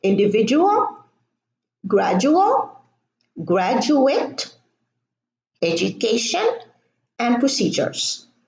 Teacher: the DU can also be pronounced as a ja, as in individual, gradual, graduate, education, and procedures.